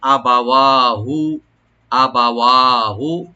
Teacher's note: আবা হামজাকে রাইট দিবেন, বার উপরে জবরটা আর একটু রাইট করে পড়তে হবে যেমন সাকিন না হয়। ওয়া এখানে এক আলিফ অবশ্যই টানবেন, আর হুতে টান নাই।